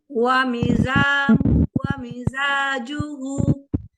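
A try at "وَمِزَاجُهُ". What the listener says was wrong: Bu-nya panjang.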